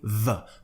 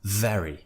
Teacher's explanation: When I say very, I'm really pushing the vv sound out. I'm voicing it. There's a strong voiced consonant sound coming out.